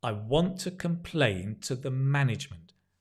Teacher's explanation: Notice when we say to, we say t, because it's not stressed.